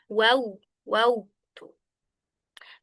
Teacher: menggunakan dua bibir akan tetapi tidak sampai ee mengatup atau bertemu yaitu huruf wau. Wau hanya saja dimonyongkan bibirnya ketika mengucapkannya.